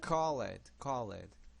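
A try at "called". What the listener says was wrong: Okay, so this is another issue I know that you have as a Portuguese speaker. Now, we don't emphasize the ed sounds at the ends of our words, only a few.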